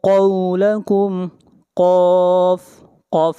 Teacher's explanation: قاف کو موٹا پڑھیں گے، قاف حروف مستعلیہ میں سے ہے